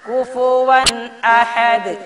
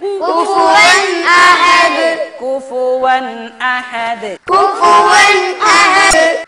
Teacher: തൊണ്ടയിൽ നിന്ന് വരുന്ന അക്ഷരം ആറ് അക്ഷരമുണ്ട് ഈ ആറ് അക്ഷരങ്ങളിൽ നിന്ന് ഒന്ന് സുക്കൂനുള്ള നൂനിന്റെയോ തൻവീനിന്റെയോ ശേഷം വന്നാൽ അവിടെ തീരെ മണിക്കാൻ പാടില്ല ഇൽഹാർ ആക്കണം കുഫുവൻ എന്ന തൻവീനിന് ശേഷം വന്ന അക്ഷരം ഹംസ ആയതുകൊണ്ട് കുഫുവൻ അഹദ് അങ്ങനെ